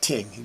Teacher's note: You hear the words like ting because them don't say the th sound.